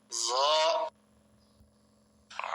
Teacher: জিহ্বার আগা উপরের দাঁতের আগায় লাগবে, নরম হবে, মোটা হবে।